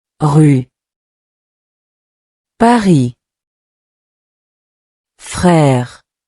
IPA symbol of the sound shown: ʁ